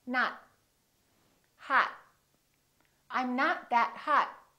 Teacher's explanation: you need to hold the T at the end to have a more American accent.